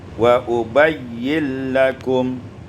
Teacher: Pada ayat yang ke 63, wali ubayyina lakum, idghamun nun fil lam, diidghamkan nun pada lam menjadi wa ubayyin lakum.